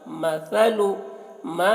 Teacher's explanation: سا کو باریک پڑھیں گے زبان کو باہر نکال کر